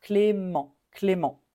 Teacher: on ne prononce pas le T à la fin. Clément. On termine avec la voyelle nasale. En. Clément.